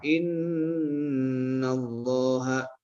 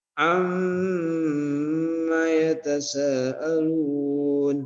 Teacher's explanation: maka nunnya itu berdengung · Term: gunnah